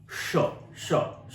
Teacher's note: तालव्य श। इसलिए कि क्योंकि वो तालु से बोला जाता है